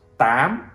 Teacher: it's pronounced Tám, which makes the word sound higher.